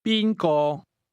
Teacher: The tones in who or whom go from the high level to the mid level.